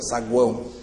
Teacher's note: Eu ouço muito mais o A. Então o A é vogal, nas pontas semivogais. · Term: tritongo